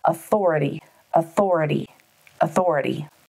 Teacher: Authority has four syllables, authority, with the emphasis on the second syllable.